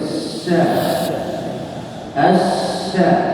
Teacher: ada huruf syin yang bertasdh tentu H syin yang bertasdh ya harus dibaca dengan mengeluarkan sifat attafasi atau angin yang berhembus secara berlebihan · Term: sifat at-tafasyi